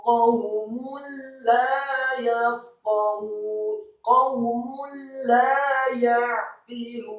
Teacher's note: Kata qaumun la ya'qilun, huruf qafnya dibaca tafkhim atau tebal fathah 1 harokat, kemudian wawunya disukunkan.